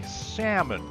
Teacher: just drop that pesky ell when pronouncing salmon